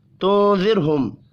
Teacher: را ساکن سے پچھلے حرف کے نیچے زیر ہے، را کو باریک پڑھیں گے.